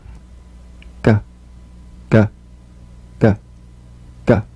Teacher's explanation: You'll feel a crisp tap and a voiced pulsation of the back of the tongue. · The voiced tongue back plosive consonant G. Place the back of the tongue in gentle contact with the soft palate.